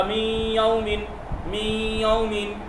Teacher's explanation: غنہ کے ساتھ ہوگا مطلب ناک سے بولا جائے گا